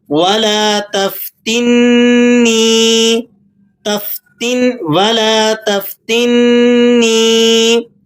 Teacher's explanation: تا کو نون سے جوڑ کر پڑھیں گے تو مشدد حرف کا لحاظ کرتے ہوئے آپ نے اسے ذرا سختی سے ادا کرنا ہے۔ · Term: نون مشدد